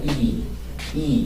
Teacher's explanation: 혀가 앞으로 쭉 밀리니까, 이는 전설모음 되겠죠? 이, 보시다시피 크게 입이 벌어지지 않습니다.